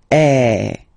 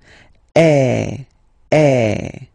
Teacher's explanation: the sound is really open, and normally your mouth should be opened a little bit more than with the accent aigu as well. Okay, so it goes like eh. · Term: accent grave